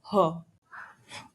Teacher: ग्लॉटल, glottis से बना sound है